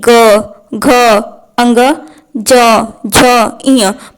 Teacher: प्रत्येक को बोलने में कंपन उत्पन्न हो रहा है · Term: सघोष वर्ण